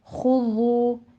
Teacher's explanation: خا کے پر ضمہ ہے، ہونٹ گول کر لیجئے، اور آگے واو مدہ ہے، 2 کاؤنٹ کرنا ہے